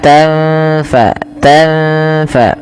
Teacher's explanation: tanfa sukun bertemu fa samarkan nunnya ketemu dengan huruf fa. Maka tanfa tanfa tidak dijelaskan sebagaimana izhar tidak dibaca wala tanfa'uha.